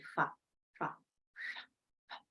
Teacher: And I say fa, fa. There is no vibration, so we say it is voiceless